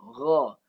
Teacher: Ghair dekat ujung halkum.